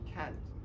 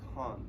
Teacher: So for American they say can't, while in the British they say can't, with slightly elongated vowel